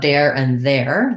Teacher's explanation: you need your tongue between your teeth your voice on and the air flowing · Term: voiced th sound